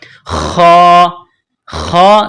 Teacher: خا کو موٹا کرنا ہے، جس طرح انسان گلے سے بلغم نکالتا ہے اسی طرح خا کو نکالیں گے